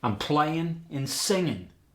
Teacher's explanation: dropping the G in the ing